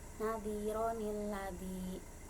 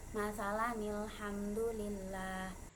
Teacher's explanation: Nun wikoyah atau nun iwad atau nun ziyadah ialah apabila ada tanwin bertemu dengan hamzah wasol, kedatangan nun kecil yang berharokat kasroh, baik di awal ayat atau di tengah-tengah ayat.